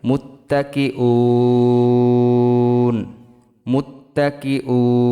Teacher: থামলে অক্ফ করলে 3 আলিফ টান হবে, মধ্যে আরজি।